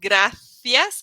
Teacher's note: here in Spain it's going to be with a th sound